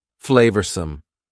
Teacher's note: Notice the pronunciation. 2 schwa sounds there.